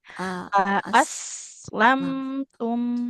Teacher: Aslamtum hamzanya nggak panjang, tidak A tapi a aslam aslamtum.